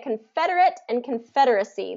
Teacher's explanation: fed is the stress syllable on both of these